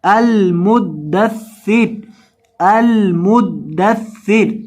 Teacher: دال اور سا دونوں کو مشدد پڑھنا ہے، سختی کے ساتھ پڑھنا ہے، اور یہاں رو آخر پہ ہے، اس کو پر پیش ہے، اس کو موٹا کر کے پڑھنا ہے، رو پیش رو، المدثرو، المدثرو۔ اور وقف کی حالت میں رو کو ساکن کر دیں گے